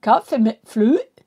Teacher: De har ett litet stötljud när danskarna pratar som vi inte har i Sverige. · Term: glottal klusil